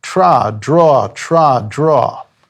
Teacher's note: in phonetics they're both called alveolars means the tip of the tongue flicks against the alveolar ridge